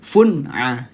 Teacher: pendek maksudnya apa? Satu ketukan saja. Fun'a. Jadi tidak ditahan